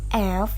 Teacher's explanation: bunyi F merupakan bunyi yang dihasilkan antara pertemuan bibir dan Gigi sehingga bunyi tersebut memberikan geseran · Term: labiodental fricative